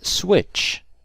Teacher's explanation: You can hear a T before the sh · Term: tch sound